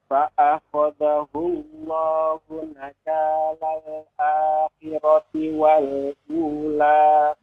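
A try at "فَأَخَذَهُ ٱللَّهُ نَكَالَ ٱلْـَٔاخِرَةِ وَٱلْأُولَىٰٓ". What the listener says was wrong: Iya, bagus.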